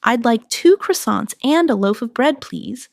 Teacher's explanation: In connected speech, loaf of sounds like loafa.